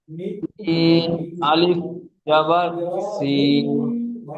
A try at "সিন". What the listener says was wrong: সিন আলিফ জবর সিন নয়, সিনটি তিন আলিফ টান হরফ। সিন।